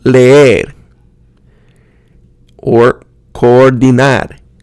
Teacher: the vowels are pronounced as two syllables that glide together.